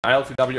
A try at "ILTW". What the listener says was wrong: But it's pronounced ILTV. W in Cyrillic language is a V.